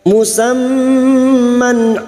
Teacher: mim yang bertasdid gunnah musyaddadah, kita dengungkan selama 3 harokat.